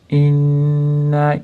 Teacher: Inna boshida mana i bilan boshlayapti, nun g'unna ya'ni tashtid bilan kelganligi uchun g'unna qilib ushlab turamiz. Inna keyin cho'zamiz.